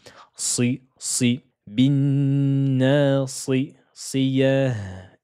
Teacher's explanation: c'est une lettre emphatique ne dites pas si si de façon aigue mais gonfle l'arrière de la langue